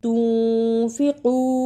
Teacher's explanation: اخفا ادا کرنے کا طریقہ، نون ساکن کی آواز کو تھوڑی دیر ناک میں چھپانا ہے